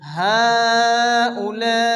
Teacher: মধ্যে মুত্তাসিল এখানে চার আলিফ কন্টিনিউ পড়তে হবে